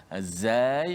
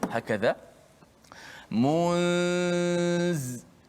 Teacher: Maka maknanya antara gigi atas dan gigi bawah ini, apabila dia menyebut ini, hujung lidah menekan di belakang gigi · Zai, huruf yang kuat sedikit daripada zal. Huruf zai kerana dia ada sifat yang menjadikan dia kuat, itu sifat safir. Pertama sekali kita faham dulu makhraj zai di mana hujung lidah ini menekan di belakang gigi.